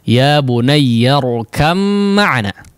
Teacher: Karena memang keluar dari satu makhraj, huruf ba dikeluarkan dari kedua bibir, begitu juga dengan huruf mim, ya, maka diidghamkan dengan idgham bi ghunnah